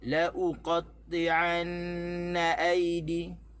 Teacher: La jangan tekan, u tu kita tekan, na kat belakang kita kena tekan.